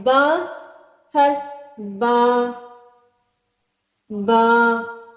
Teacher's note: با جو ہے یہ ہونٹوں کی تری سے نکلتا ہے، دونوں ہونٹوں کے تر حصے سے۔ ٹھیک، دونوں ہونٹوں کے تر حصے سے ادا ہوتا ہے، تر حصے سے ادا ہوتا ہے حرف با۔